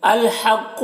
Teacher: حا کو حلق سے ادا کریں گے، قاف کو پر پڑھیں گے، قاف حروف مستعلیہ میں سے ہے۔